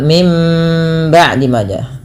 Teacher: Kemudian pada lafal mim ba'di maja. Bunyi suara nunnya diganti dengan suara mim dan ini kita istilahkan dengan bacaan iqlab dan ditahan suara mnya dua harakat. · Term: bacaan iklab